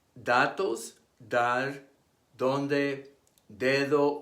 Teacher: It is pronounced by placing the tongue against the teeth like the TH in the English words this and that.